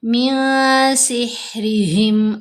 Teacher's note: रा के नीचे ज़ेर है, हमने रा को बारीक पढ़ना है